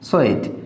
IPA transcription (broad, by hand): eɪ